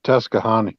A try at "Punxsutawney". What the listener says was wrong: Well, it starts with a P. Punxsutawney.